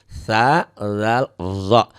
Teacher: Zo itu sebetulnya 3 huruf yang sama, sa ya, awalnya sa, tarik lidahnya ke dalam sedikit jadi zal. Sa, zal, tarik lagi ke dalam lidahnya jadi zo. Jangan ditarik lagi lidahnya ke dalam jadi habis ya.